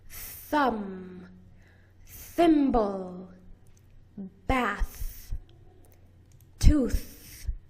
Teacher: You put your tongue between your teeth, but this time your voice box is turned off. Blow air out with your tongue between your teeth.